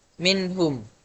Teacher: Dan izhar cara bacanya apabila nun sukun atau tanwin bertemu huruf halq atau huruf yang keluar dari tenggorokan, maka dibaca jelas, tidak ada dengung · Contohnya, minhum. Nun sukun dibaca jelas ketika ketemu huruf H, tidak ada dengung. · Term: idhar